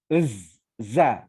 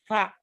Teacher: makrojnya gigi tertutup lidahnya di antara dua gigi dari dalam itu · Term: za